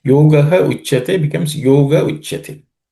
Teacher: Yoga also, where Visarga gets dropped because of Sandhi.